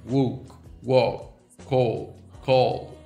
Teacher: Open mid back rounded vowel. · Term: open O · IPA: [ɔ]